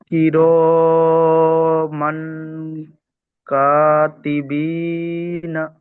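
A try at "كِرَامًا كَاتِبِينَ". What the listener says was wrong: জি, কা আরেকটু টান হবে। কাতিবিনা।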